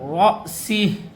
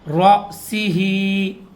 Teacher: حمزہ کے اوپر جب بھی جزم آتی ہے تو حمزہ کے پڑھنے میں جھٹکا دیتے ہیں